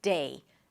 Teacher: Make sure you transition from one vowel to another, that you actually hear the E sound at the end. Not de, but day.